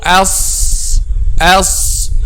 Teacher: if it's not raised it would be light so as as the back of the tongue in this case will be raised which means that this letter is a heavy letter